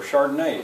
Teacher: the accents on the final syllable